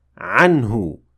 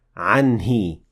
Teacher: وَأَنْتُمْ عَنْهُ غَافِلُونَ. So here we still said عنه with dhamma and not anhi with kasra